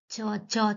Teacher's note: च तो देखेंगे तो तालु से टच होगा आपके ऊपर वाले तालु से। देखिए च वर्ग के वर्णों का उच्चारण स्थान तालु होता है। जिन पर ध्वनि के उच्चारण में जीवा का मध्य भाग तालु से स्पर्श करता है।